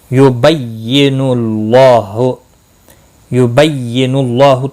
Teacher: اللہ کا لام پیش کی وجہ سے پر پڑھا جائے گا. اس کے اوپر کھڑی زبر بھی ہے, ایک الف کے برابر کھینچ کر پڑھیں گے.